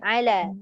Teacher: Pastikan ala tu dia tetap ala, jangan alo. Kita nak menebalkan sungguh-sungguh tadi takut jadi ala tori, tak boleh.